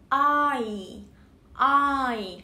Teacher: I là một nguyên âm đôi bắt đầu bằng O và kết thúc bằng I. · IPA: /ɔɪ/